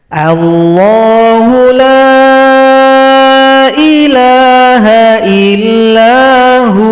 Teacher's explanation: Kalau berhenti pada kata huwa, wawunya disukunkan, ha panjang 2 ketukan.